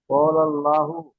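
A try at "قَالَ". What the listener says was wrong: কলাল, ক টান হবে না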